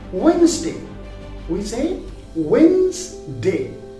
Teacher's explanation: So the word is spelled as Wednesday, where the D is silent.